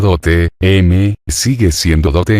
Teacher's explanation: la O cerrada y acentuada nunca se diptongó. La palabra latina dote, sigue siendo dote en español.